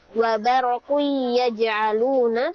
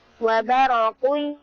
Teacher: Dan jangan lupa ada dengan bigunah, dengan dengung, sehingga tidak boleh kita membacanya langsung wabarokui yaj'aluna, tetapi harus kita baca dengan menahan dengan dengung. Wabarokui masuk dengan hidung. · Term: idgham bi gunna